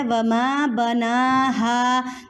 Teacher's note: نون کے اوپر کھڑی حرکات ہے، اس کو کہتے ہیں کھڑی زبر، اس کو آپ نے ایک الف کے برابر کھینچ کر پڑھنا ہے، لمبا کرنا ہے، ٹھیک ہے۔